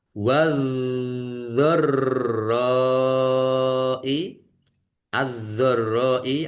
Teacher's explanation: yaitu do ditandai dnya ada tasdidnya donnya dibaca dobel ditekan dan ditahan biar tampak dobelnya · ro fathah alif mad thobi'i tetapi karena bertemu dengan huruf hamzah dalam satu kata maka menjadi mad wajib muttasil Dibaca panjang harus lima harakat